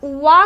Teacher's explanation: वा का उच्चारण दंत ओष्ठ से होता है।